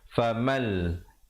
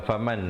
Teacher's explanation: Tapi di sini kalau baca faman lam yajid, baca dalam wajah izhar, salah. Dia kena baca dalam wajah idgham bila gunnah. Masuk tanpa dengung. Famal, bukan faman lagi dah ya.